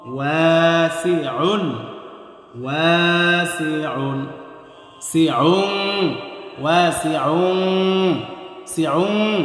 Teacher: ওয়াল্লাহু ওয়াসিউন, ওয়া, ওয়াও আলিফ জবর ওয়া, জবরের পরে কালি আলিফ মাদের হরফ, আর মাদের হরফ হইলে 1 আলিফ টেনে পড়তে হয়। মাদ্দে তবাই।